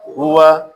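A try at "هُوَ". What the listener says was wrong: ہو آ نہیں پڑھنا، ہوا، وا کو پڑھنے کے لیے ہونٹ گول کرنے پڑے، ہوا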